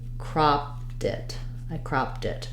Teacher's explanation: the T will move back to becoming more voiced, like a flap, and it'll sound more like cropped it.